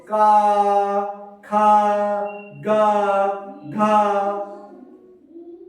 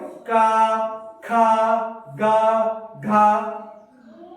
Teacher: ये सब कंठ से बोल रहे हैं